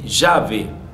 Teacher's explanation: el fonema lateral palatal de llave, cuando uso llave, uso el dígrafo L.